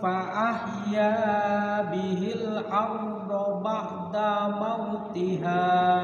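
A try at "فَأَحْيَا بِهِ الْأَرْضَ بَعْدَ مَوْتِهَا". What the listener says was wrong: Iya, daknya pendek, ba'da mau langsung.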